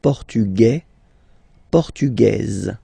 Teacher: Masculine, portugais, you don't pronounce the S. Feminine form, portugaise, you pronounce this z sound